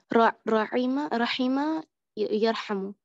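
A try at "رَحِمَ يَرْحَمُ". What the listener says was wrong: Rahima yarhamu. Good.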